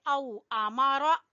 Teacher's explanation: यहाँ पे वाउलीन है, औ पढ़ेंगे